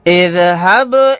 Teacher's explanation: یہاں پر با ساکن ہے، یہاں پر ہم قلقلہ کر کے پڑھیں گے